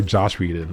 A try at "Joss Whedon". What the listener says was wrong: Joss, no H.